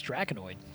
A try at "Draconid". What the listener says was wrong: No, there's no O. It can't be Draconoid. It's Draconid. it's Draconid.